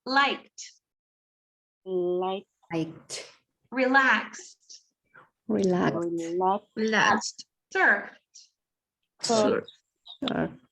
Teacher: it's pronounced as a t sound when the final consonant is unvoiced.